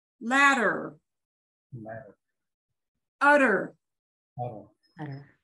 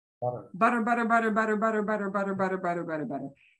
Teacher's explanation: when you say it at a normal speed you actually do get a little flap